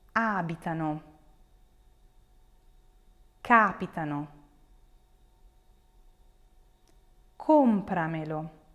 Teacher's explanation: you have an accent that falls on the fourth to last